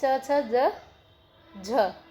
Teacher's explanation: च, छ, ज, झ, ये आपके चारों च, छ, ज, झ स्पर्श संघर्षी होते हैं।